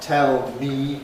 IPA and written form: ˈtel miː (tell me)